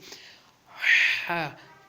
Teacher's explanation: جی ہاں، اس کے بعد ہے ہا. ہا کو پڑھیں گے حلق سے، حلق کے اندر سے اس کی آواز نکلے گی